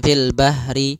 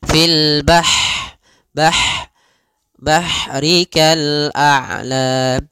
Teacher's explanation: Ha, sifat ha di sini hati-hati jangan dibaca dengan ha besar, jangan fil bahri, tapi dia ha pedas, lembut, dan juga dia punya sifat hamas, mengalirnya nafas